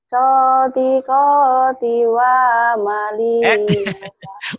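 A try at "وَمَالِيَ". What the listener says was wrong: Wanya kenapa panjang? Wama. Wamalia. Bukan, Wamalia yang tengah dulu. Wamalia, Wamalia. Sodiqati wama. Sodiqati wamalia famalia.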